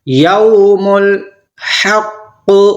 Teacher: واو ساکن ہے، اس سے پہلے والے حروف کے اوپر زبر ہے، واویلین، نرم آواز کے ساتھ ہم جلدی پڑھیں گے ، یوم الحق، بڑی حا اور بڑا والا قاف، اس سے